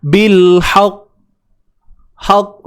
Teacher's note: Macam huruf qaf ni, dia huruf syiddah, dia tertahan. Sebab tu kita dengar macam bunyi dia lambat.